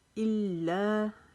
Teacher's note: لام کو تشدید کی وجہ سے رکاوٹ سے پڑھیں گے، لا کو ایک الف جتنا لمبا کریں گے۔